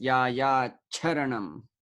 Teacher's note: You may keep it as sha or it changes into cha, the Mahaprana aspirated one, cha.